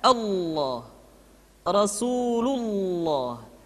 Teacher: lam yang terdapat pada lafzul jalalah tersebut mesti ditebalkan Allah Rasulullah kecuali kalau lafaz Allah didahului oleh huruf yang berharakat